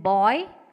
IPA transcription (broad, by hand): bɔi